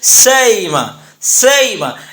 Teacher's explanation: بین بین قریب کرنے کی صورت میں سئیمہ کو حمزہ کے مخرج اور حمزہ کے نیچے چونکہ زیر ہے لہذا یا کے مخرج، یعنی حمزہ کو ادا کرتے وقت ہم نہ حمزہ ادا کریں گے نہ مکمل یا ادا کریں گے، دونوں کے درمیان ادا کرتے ہوئے ہم یوں کہیں گے سئیمہ، سئیمہ۔